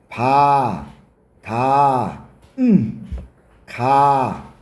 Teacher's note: 공기의 흐름을 막았다가 터트리는 소리. 이게 파열음이야.